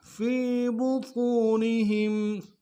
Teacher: یاکلون فی بطونہم، فا کو یا کے سامنے لانا یا مدائی کے اعتدال میں کھینچیں گے. طا کو موٹا ادا کرتے واو کے سامنے لائیں گے، واو مدائی کے اعتدال میں کھینچیں گے. ہا کو میم ساکن کے سامنے لانا ہے، یہاں پہ غنہ کریں گے.